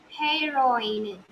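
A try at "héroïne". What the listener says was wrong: H will be silent. So what is the pronunciation if H will be silent? H will be silent. Yeah, first sound won't be there.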